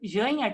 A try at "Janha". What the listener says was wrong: Ranha, né? Porque o J em espanhol vira...